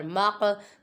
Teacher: قاف ساکن ہے اور حروف قلقلہ میں سے ہے، ادھر قلقلہ کریں گے، آواز لوٹی معلوم ہوگی.